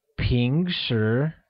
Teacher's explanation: the word usually is translated as ping sure which carries a mid rising tone on both the eyes making it ping sure good job note